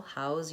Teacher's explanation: but the word house has the s sound no voicing on the end